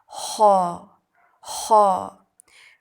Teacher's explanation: زبان کے پچھلے حصے کو اوپر کی طرف بلند کرتے ہوئے موٹی آواز میں